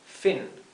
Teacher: Fíjense que la I se pronuncia más cerrada que la I del español. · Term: I más cortita